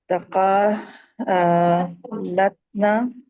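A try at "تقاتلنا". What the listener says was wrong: फिर आपने ते खा गए हो। ते दोबारा खा चुकी हो आप।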